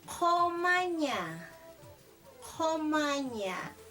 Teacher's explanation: la I se va a abrir como si fuera una E y la U como una O abierta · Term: E abierta